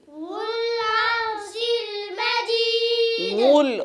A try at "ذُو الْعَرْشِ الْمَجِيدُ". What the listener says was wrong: गुल नहीं, जाल को नरम पढ़ना है, नरमी से पढ़ना है. ذुल ذुल ذुल ذुल ذو العرش المجيد.